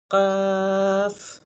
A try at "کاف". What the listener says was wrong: تھوڑا سا موٹا ہے ابھی بھی. کاف باریک کرے.